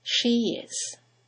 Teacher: there is a semi-vowel, y, that links the vowel at the end of she to the vowel at the beginning of is.